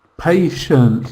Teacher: It's got a schwa sound in the second syllable.